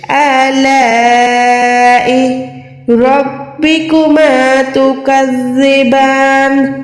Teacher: اب لا پہ دیکھیں بڑی مد ہے، یعنی لا کو آپ نے کم سے کم 3 سے 4 سیکنڈ لمبا کھینچنا ہے